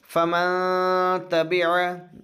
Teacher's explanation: فمن تبع، یعنی نون کے مخرج سے اسے ادا نہیں کریں گے بلکہ نون کی آواز کو ناک میں چھپائیں گے، نون ظاہر نہیں ہوگا، ناک میں چھپے گا۔ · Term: اخفا